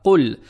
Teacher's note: Не следует натягивать дамму на букву Каф. Далее следует буква Лам. Буква Лам мягкая.